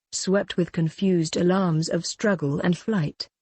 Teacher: overall the line is iambic except for the first foot the first foot is trochaic stressed unstressed